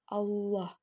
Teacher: suaranya menebal dengan cara menutup bagian lidah ke langit-langit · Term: lafaz Allah